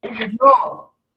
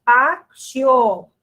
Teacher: o som do i é um som mais fraco em relação ao som da letra o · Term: semivogal